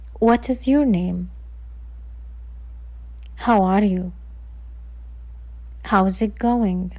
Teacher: falling tone, we're asking and looking for new information. And this happens usually with WH questions.